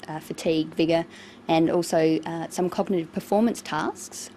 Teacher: a tone that's neither rising nor falling, just a flat tone for the items in the list. This tells the listener that she hasn't finished her list of tests.